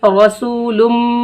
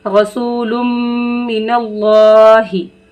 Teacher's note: आवाज़ को नाक में रोक कर पढ़ेंगे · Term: गुन्ना